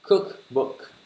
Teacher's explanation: Này có dấu nhấn từ đầu tiên. Âm đầu tiên.